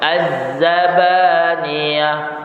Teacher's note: Jadi bunyi desir zai tu dia kuat.